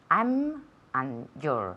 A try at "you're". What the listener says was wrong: You're, exactly. You're, not jaw. Jaw is mandibula. Jaw. You're.